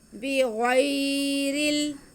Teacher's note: را کے نیچے زیر ہے تو را باریک پڑا جائے گا اور را کا زیر آگے لام کے ساتھ ملے گا۔